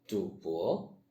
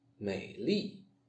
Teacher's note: 第三声. The third tone is drawn downwards, then upwards, in both Pinyin and Zhuyin.